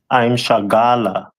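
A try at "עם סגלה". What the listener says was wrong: So that letter, the first letter after I'm is Sa, as opposed to Shah. So I'm Sagala, right?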